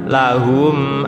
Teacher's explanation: agak ditahan mim bertemu mim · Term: Idgham Mimi